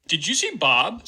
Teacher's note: basically, the D becomes a J or something more like it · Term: palatalization